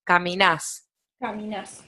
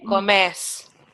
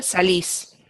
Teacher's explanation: Por ejemplo, en el caso de caminar, le quitamos la R y lo reemplazamos con una S y lo acentuamos en la última, queda grave.